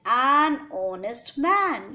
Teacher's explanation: H is a consonant, but when we are speaking honest, H silent है, O की आवाज आ रही है. तो we will take this O and not H.